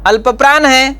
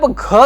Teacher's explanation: ग अल्पप्राण है, लेकिन जब घ का उच्चारण करते हैं तो ग प्लस फिर से ह आ जाता है, इसलिए घ महाप्राण है।